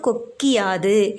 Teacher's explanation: எழுத்தாகக் கொண்ட சொற்கள் வரும்போது குற்றியல் உகரத்தில் உள்ள உள்ள உகரம் இகரமாக மாறும் இந்த இகரம் தனக்குரிய ஒரு மாத்திரை அளவிலிருந்து அரை மாத்திரை அளவாக குறைந்து ஒலிக்கும் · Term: குற்றியல் இகரம்